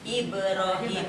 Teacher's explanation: Jadi ba-nya tuh ditekan, dipantulkan, itu namanya kolkolah.